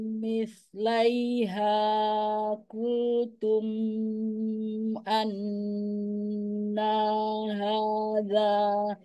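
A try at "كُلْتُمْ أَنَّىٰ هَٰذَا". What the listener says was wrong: Punten diulang. Kultum mim mim sukunnya nggak perlu dipanjangkan karena dia izhar safawi. Kultum anna.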